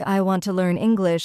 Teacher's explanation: So a sentence like, I want to learn English, the stress is on want, learn, and English. The other words are softer.